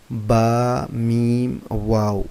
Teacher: یہ ہونٹوں کے ملنے اور جدا ہونے سے ان کی آوازیں نکلتی ہیں